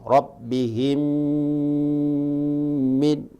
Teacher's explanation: Rabbihim min kulli ya, didengungkan ya, mim dengan mim. Rabbihim min, tidak boleh dilewati, harus ada jeda atau didengungkan atau berdiam di situ ya, antara mim sukun dengan mim yang ada di depannya. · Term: idgham mimi